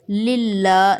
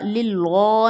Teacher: لام جلالہ سے پہلے زیر ہے تو ہم اس کو باریک پڑھیں گے